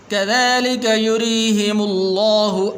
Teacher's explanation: یہاں پر یہ را کے نیچے زیر ہے تو اس کے لیے باریک کر کے پڑھیں گے